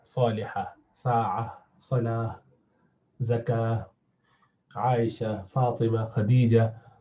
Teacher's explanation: the rounded ta at the end, which when you stop at is pronounced as ha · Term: ta marbuta